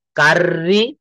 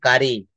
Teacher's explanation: পাশাপাশি ডাবল আর থাকলে ব্রিটিশরা শুধুমাত্র একবার আর এর উচ্চারণ করে।